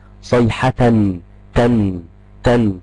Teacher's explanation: في صوت نون ساكنه لكنها مش موجوده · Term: التنوين